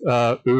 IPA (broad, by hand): øː